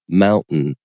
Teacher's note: you don't just drop the te out you change into a glottal stop so Mountain so there's still something there it's just not a